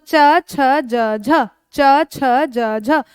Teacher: एक तो स्पर्श व्यंजन है और स्पर्श व्यंजन के साथ साथ जब आप उच्चारण करो जीभ रगड़ मार रही है, थोड़ा सा घर्षण हो रहा है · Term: स्पर्श संघर्षी